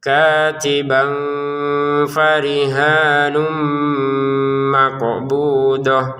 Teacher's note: Katiban bertemu fa dibaca dengan samar.